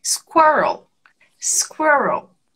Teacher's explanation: E o L que repete com a língua lá no céu da boca.